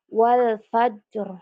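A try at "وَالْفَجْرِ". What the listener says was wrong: Enggak, qalqalahnya. Wal fajr.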